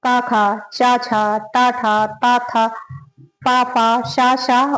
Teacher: सघोष की परिभाषा अघोष की परिभाषा वे वर्ण जिनके उच्चारण में स्वर तंत्रियां कम झंकृत होती हैं उन्हें अघोष कहते हैं। अघोष वर्गीय व्यंजनों का पहला दूसरा वर्ण अघोष होता है।